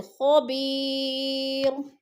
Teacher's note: وقف کی صورت میں دو پیش نہیں پڑھے جائیں گے بلکہ را کو ساکن کر کے پڑھیں گے